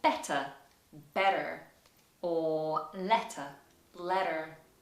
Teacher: when t appears in the middle of the word in some cases you'll hear it sounded like a d in america